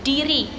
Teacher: Contoh katanya itu diri. Nah, diri ini merupakan letupan bersuara.